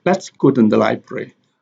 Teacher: let and go have the sentence stress